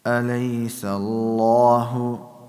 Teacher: the lam in the word Allah is heavy